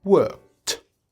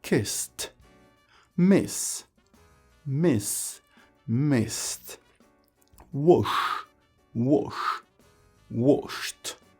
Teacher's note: Donc, en fait, après un son de consonne sans vibration, le ED se prononce T